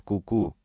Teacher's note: Для этого во время промывания произносит ку-ку, как бы забавно это ни звучало. При слоге ку естественным образом поднимается мягкое небо, закрывая проход из носа в глотку.